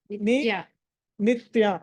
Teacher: నిత్య వినిపిస్తుంది చ వినిపించకూడదు